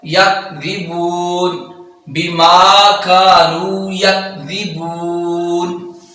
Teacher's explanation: یہ کاف ہے، یہ باریک کاف ہے اور یہ ذال ہے، بغیر سیٹی کے ادا ہوگا. ہم پڑھ جاتے ہیں یکذبون، جبکہ یہ زی نہیں ہے، ذی ہے، ذال ہے.